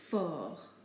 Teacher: We do not pronounce the T in this case.